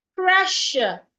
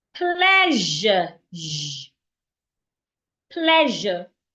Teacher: Pressure has the SH sound. While pleasure has the ZH sound.